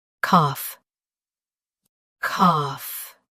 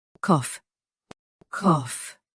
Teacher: UK Cough is shorter.